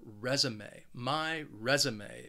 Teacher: This word has three syllables and the stress is on that first syllable.